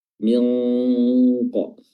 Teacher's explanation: Hukumnya adalah ikhfa, ikhfa haqiqi, dan di sini qaf karena memiliki sifat isti'la, sifat yang tebal, maka huruf nunnya juga ikutan tebal